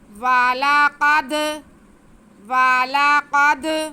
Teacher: دال حرف قلقلہ ساکن ہے تو ہم اسے جنبش دے کے پڑھیں گے، یعنی کہ واضح کر کے پڑھیں گے